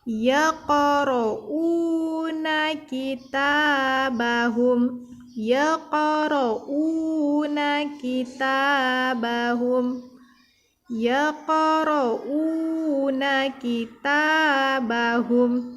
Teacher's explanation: ada dua yang dibaca panjang, yaitu yang pertama u sama ta, dan huruf qaf kita pantulkan